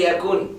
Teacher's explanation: When you stop at it, you say yakun. You pronounce the noon completely. When you carry on, you say yakullahu.